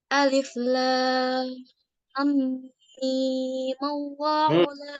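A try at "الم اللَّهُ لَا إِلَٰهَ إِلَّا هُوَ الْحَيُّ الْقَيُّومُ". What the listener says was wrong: Mimnya 2 harokat aja. Mim, Allahu.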